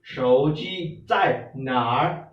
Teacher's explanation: Okay, so if you are asking someone where is my mobile, okay, 我的手机 okay, this 手 is with the third tone, 手机 is with the first tone, the flat tone